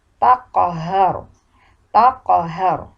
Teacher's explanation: huruf qaf adalah huruf syiddah. Maka ketika mengucapkan pun suara harus ditahan terlebih dahulu.